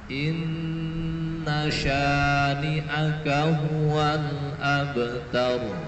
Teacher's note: Jadi tidak ada tasdid di huruf nun, tapi syanya dibaca panjang.